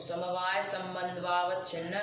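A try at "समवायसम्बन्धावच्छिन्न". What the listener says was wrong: संबंधवा, ये संबंधवा तुम भोजपुरी वा। संबंध से अवच्छिन्न होगी ना, तो तुम क्या बोलना चाह रहे हो? अकस्मण दीर्घ लगा करके बोलो। संबंधावच्छिन्न, आगे जो संबंध है उसको बोल देना।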